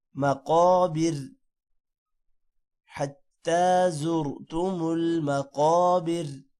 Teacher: قاف موٹا ہوگا اور بر کا را پتلا ہوگا